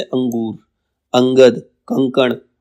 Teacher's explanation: बाद क्या अनुस्वार अनुस्वार क्या जिसके ऊपर बिंदी आती है सिर्फ ये स्वर के बाद आने वाला व्यंजन है जिसकी ध्वनि नाक से निकलती